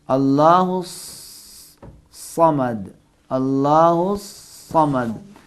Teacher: اللہ سین کی طرح نہیں، زبان چمچ کی طرح اوپر کے تالو سے لگے گی اور منہ میں ہوا بھر جائے گی. اللہ سیٹی کی آواز آئے گی لیکن سین کی نسبت بھاری اور کم آئے گی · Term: صاد